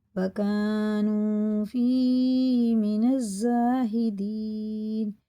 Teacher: وَكَانُوا فِيهِ مِنَ الزَّاهِدِينَ، ظاہر کر کے الف سے پہلے زبر ہے تو حرف مد ہے، کھینچ کے پڑھیں گے ایک الف کے برابر، اور یہ الف اور لام بالکل نہیں پڑھا جائے گا، نون سیدھا لگے گا زا میں، حرف شمسی میں سے ہے یہ دونوں حرف. · یا ساکن سے پہلے زیر ہے تو کھڑے زیر کی طرح کھینچ کے پڑھیں گے یہ بھی، اور یہ تینوں حرف مد ہے، یا ساکن سے پہلے زیر، واو ساکن سے پہلے پیش، الف سے پہلے زبر.